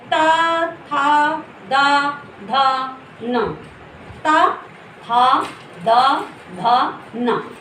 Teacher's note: ये दंत व्यंजन है जिसको हमारी जीभ दांत से आके टकराती है